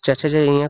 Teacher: च छ ज ञ का उच्चारण तालु से